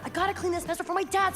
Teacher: I have got to becomes I gotta with a flap t